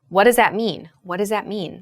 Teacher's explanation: So the TH in that becomes like a S or a Z sound.